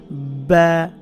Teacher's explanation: বা, খুবই সহজ, 2 ঠোঁট থেকে, ঠোঁটের ভিজা অংশ থেকে বা এভাবে বলতে হবে।